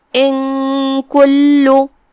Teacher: ہم نون کو چھپاتے ہوئے بغیر ظاہر کیے ہوئے لیکن غنہ کے ساتھ یہ حکم کو ادا کریں گے · لام پہ تشدید ہے تو ہم 2 حرف کے برابر لام کو پڑھیں گے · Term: اخفاء